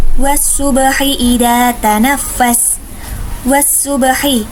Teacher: alif lam bertemu dengan salah satu huruf samsiah yaitu shad, maka dinamakan juga alif lam samsiah dan biasanya alif lamnya tidak terbaca atau tidak dibaca.